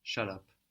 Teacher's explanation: You might hear though that the B has turned to a P in Turkish.